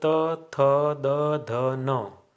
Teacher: ये सभी व्यंजन दांतों से उच्चरित होते हैं, यानी कि हमारी जीभ जब हम इनका उच्चारण करते हैं तो दांतों को स्पर्श करती है, अतः इन्हें दंत्य व्यंजन भी कहते हैं।